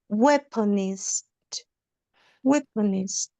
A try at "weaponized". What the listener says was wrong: Okay, I think that sort of turns into a Z when we say it. So weaponized, weaponized.